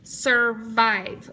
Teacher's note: We hear that long I in the second syllable.